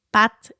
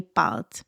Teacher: on va avoir vraiment un a plus ouvert dans patte et un a plus fermé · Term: voyelles ouvertes et fermées